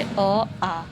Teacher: तो अगर हम बात करें उच्चारण के स्थान आधार पर तो इसमें जो है हमारे जो स्वर हैं वो जैसे अ आ ये कंठ से बोले जाते हैं।